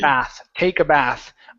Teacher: that's going to be a short a, okay, and then an unvoiced th.